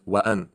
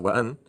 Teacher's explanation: So wa, and then here we don't say wa, so that would have been wan, but because there's a hamza, it's wa an. You actually pronounce the A separately.